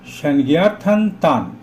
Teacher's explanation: অনুস্বারের পরে ত থাকার জন্য অনুস্বারের উচ্চারণ দন্তন্য হলো